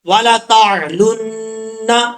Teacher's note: اس کے بعد ہے والا تعلن، تا کے بعد عین ہے، عین کو پڑھتے وقت عین کو عین کے مخرج سے ہی نکالنا ہے اور حمزے کی آواز نہیں آنی چاہیے. اس کے بعد جو نون ہے مشدد، نون کے اوپر ایک الف کی مقدار غنہ کریں گے.